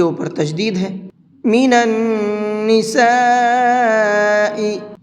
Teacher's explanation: مد متصل کو 4 سے 5 الف کے برابر کھینچ کر کے پڑھتے ہیں، تو ہم یہاں اس کو 4 سے 5 الف کے برابر کھینچ کر کے پڑھیں گے۔